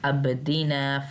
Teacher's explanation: با پہ کلکلا کرنا ہے